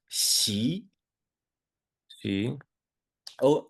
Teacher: when you see an X in the pinion system, it makes a sound that sort of is between the S and the SH sound